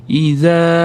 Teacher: Zdan keyin alif mat, tabiiy mat kelyapti. Ozgina cho'zamiz. Og'zimiz katta.